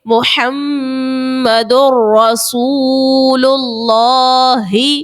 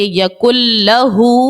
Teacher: جب آپ یہاں پر ادغام کر رہے ہو تو آپ کی آواز ناک میں نہیں جا رہی ہے